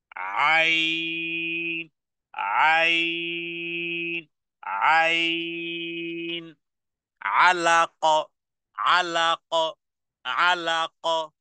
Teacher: হলকের মধ্যখান থেকে গলার মধ্যখান থেকে মুখের কোন কাজ নেই · হলকের মধ্যখান থেকে 4 থেকে 6 হারাকা পরিমাণ টেনে পড়তে হবে, উচ্চারণে আওয়াজকে কঠিন করতে হবে।